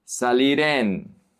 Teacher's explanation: The R connects to the E.